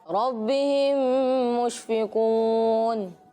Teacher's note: میم ساکن کے بعد دوسری میم آئے تو ادغام شفوی ہوگا، یعنی میم ساکن میں غنہ کریں گے۔